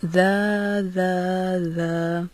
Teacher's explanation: زبان کی نوک کو اوپر کے سامنے والے 2 دانتوں کے کنارے سے لگا کر ذال کی ادائیگی کی جاتی ہے، جیسے ذا ذا ذا۔